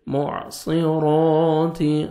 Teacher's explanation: صاد پڑھیں گے، سین میں ساؤنڈ مکس نہیں ہونا چاہیے